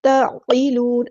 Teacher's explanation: عین کو وسطی لیکن مڈل تھروٹ سے ادا کرنا ہے